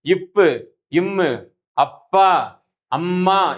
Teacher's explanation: இப்பு இம்மு ஆகிய இருமைகளும் மேலிதழும் கீழிதழும் பொருந்துவதால் பிறக்கின்றன. மேலிதழ்னா மேலுதடு, கீழிதழ்னா கீழுதடு. · மேலுதடும் கீழுதடும் இணைவதால் பிறக்கக்கூடிய எழுத்துக்களாக